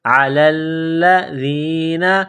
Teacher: کے ساتھ ملانا ہے، لام میں سختی کرنی ہے، علی الذین، ذال کو نرم کرنا ہے، زبان باہر نکالیں گے ذال کو پڑھتے وقت